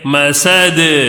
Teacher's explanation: دال کے اوپر جزم لگائے تو کیا ہوتا ہے قلقلہ بھی کر کے پڑھنا ہے